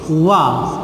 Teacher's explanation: वा का उच्चारण स्थान क्या है? दंत प्लस ओष्ठ है।